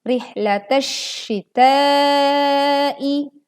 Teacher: Leburkan ya alif lam ke shinnya jadi alif lam tidak terbaca, langsung masuk ke huruf shin.